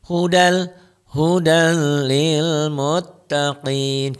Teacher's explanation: di sini idgham idgham bilagunnah digolongkan dileburkan dimasukkan di dengan la Tidak guna dengung tidak pakai dengung jadi jangan ditahan jangan didengungin